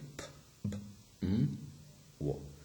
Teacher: these sounds are produced with the help of both of the lips, okay? So that's why they're called bilabial sounds.